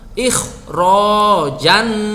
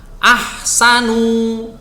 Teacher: Dan ini dibaca tebal. Huruf kha ini dibaca tebal, beda dengan ha atau ha yang dibaca tipis.